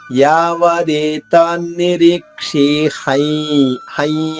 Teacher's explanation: హై అనగానే మనకి నోటితో పాటు ముక్కు నుంచి కూడా గాలి బయటకు వస్తుంది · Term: సానునాసిక